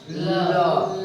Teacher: तुम्हारा जीभ जो है अगला भाग ऊपर स्पर्श कर रहा और हवा क्या कर रहा हवा क्या कर रहा है पार्श्व से निकल रहा है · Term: पार्श्विक व्यंजन